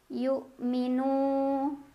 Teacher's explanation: Yang dibaca hamzah suaranya tertahan kuat. Syiddah ya. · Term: hamzah sukun